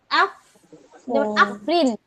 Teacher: নিচের ঠোটের পেট সামনের উপরের দুই দাঁতের আগার সঙ্গে লাগিয়ে